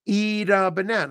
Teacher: So the T in eat becomes a D.